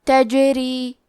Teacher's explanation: کلمت تجری میں حرف الجیم پہ جزم ہے. جیم بھی حروف القلقلہ میں سے ہے تو ہم یہ حرف کو ہلاتے ہوئے یہ کلمہ کو پڑھیں گے